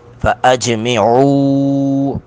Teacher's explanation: او پر مد منفصل دو الف کے برابر اس کو کھینچیں گے · جیم ساکن پر قلقلہ کر رہے ہیں